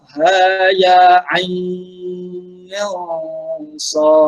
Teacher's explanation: ain dan huruf sad itu di situ ada hukum ikhfa hakiki. Jadi kena dengung di situ sebelum masuk kepada huruf sad. Okey. Ain itu yang pertama dipanjangkan 6 harakat.